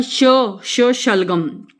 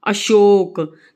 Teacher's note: ये श, इसका उच्चारण श शलगम, इसका जब हम उच्चारण करते हैं तो उच्चारण करते समय हमारी जीभ है जो तालू से टकराती है